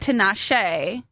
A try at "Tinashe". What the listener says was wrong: Well, it's on the second syllable. The accent's on the it's Tinashe, like that. No, yeah, Tinashe.